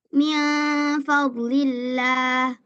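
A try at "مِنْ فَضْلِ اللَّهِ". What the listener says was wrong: Dotnya jangan ya. Dotnya jangan dipantulkan ya. Fadlillah jangan. Fadlillah.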